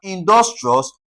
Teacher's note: Emphasis will be laid on dus.